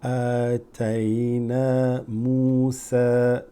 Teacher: Hamza followed by Alif slightly lengthens it.